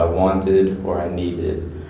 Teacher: need ends in d and we're going to say the ID on the end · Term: ID sound